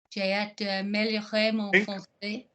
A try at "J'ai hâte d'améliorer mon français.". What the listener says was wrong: Link. Link. J'ai hâte d'améliorer. Any length with the de. The de gives us no length. J'ai hâte d'améliorer mon français. Not de. Da.